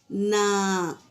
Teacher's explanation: تو نون کا تو ہم مخرج سمجھ گئے کہ اوپر کے دانتوں کے مسوڑوں کو زبان کا کنارہ لگائیں تو لام ادا ہوتا ہے۔ نوک دیکھو، زبان کی نوک کیسے مسوڑوں پر لگ رہی ہے تو نون ادا ہوگا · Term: نون کا مخرج